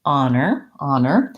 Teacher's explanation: So in the dictionary, I'm going to see that this has first syllable stress. The first syllable is long and the second syllable is short.